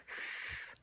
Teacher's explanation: Чуємо шум, тому цей звук глухий.